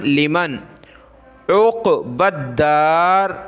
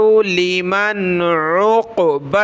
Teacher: قاف کو موٹا کرنا ہے